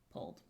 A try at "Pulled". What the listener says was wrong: I don't know you're saying pulled. Pulled? Yeah, you're not saying that. You're saying pulled. P-O-L-E-D.